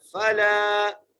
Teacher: یتیم فلا فا زبر فا لام کو ایک الف مقدار کھینچ کے پڑھنا ہے